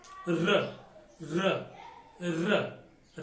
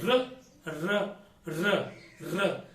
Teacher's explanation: लुंठित व्यंजन। तो र को अपन लुंठित व्यंजन कहते हैं क्योंकि जबान अपन की गोल हो जाती है, गोल होकर वह लुढ़कने लग जाती है, लुढ़कती है, तब इसको अपन कहते हैं लुंठित।